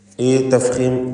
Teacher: ഇസ്തിഅലാന്റെ ഹർഫായ ഖാഫ് അതിനെ തഫ്ഖീം ചെയ്യണം, സ്വരഭാരത്തോടെ തടിപ്പിച്ച് ഉച്ചരിക്കണം. ഈ തഫ്ഖീം അതിൻ്റെ ദീർഘാക്ഷരമായ അലിഫിലും നിലനിർത്തുകയും വേണം.